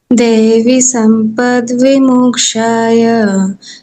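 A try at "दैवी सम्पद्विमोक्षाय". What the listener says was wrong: ठीक है, दैवी, ये भी ईकार है, ये भी ई, बड़ी ई है, दीर्घ ई। तो दैवी, यहाँ थोड़ा सा रुकना है, यहाँ पर भी थोड़ा सा रुकना है, बाकी एकदम परफेक्ट। दैवी संपत विमोक्षाय, और यहाँ पे संपदम दैवी, वी बड़ी है, बाकी ठीक था।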